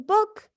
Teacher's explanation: It is produced with rounded lips and the tongue in the highest and farthest back position possible. Then it is high, back, and rounded.